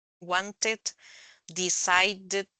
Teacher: los que terminan con t o d se pronuncian con it al final